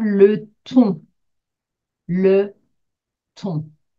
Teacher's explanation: the nasal sound which makes you do quite pouty lips